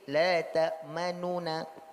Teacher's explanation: nun tidak penuh, tapi diucapkan sebagian, tapi nunnya juga jelas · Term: raum